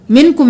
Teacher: اخفا ہوگا، یعنی ناک میں آواز کو چھپائیں گے